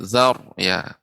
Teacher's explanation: Alhamdulillah sedikit saja tadi koreksiannya yaitu pada huruf ro ya, perlu ditebalkan karena sebelum ro yang sukun ada huruf yang berharokat fathah. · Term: ro sukun